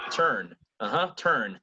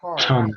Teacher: So you have the R in the final position, but also very near the end. Before a consonant, the R is dropped. It's not pronounced.